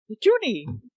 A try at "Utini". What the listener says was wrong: Nope, that's not how that's pronounced. Yeah, there's no E's in there at all.